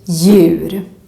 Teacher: the D is completely silent. Just ignore it and just pronounce the letter Y.